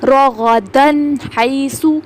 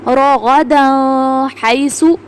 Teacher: ہا کی ایک اور مثال ہم دیکھتے ہیں، وَكُلَا مِنْهَا رَغَدًا حَيْثُ، رَغَدًا حَيْثُ، تنوین کے بعد ہا آ رہا ہے، ہا حروف حلقی میں سے ہے تو یہاں پہ ہم نے تنوین کی جو آواز ہے اس کو ہم نے ظاہر کر کے پڑھا ہے، ہم نے غنہ نہیں کیا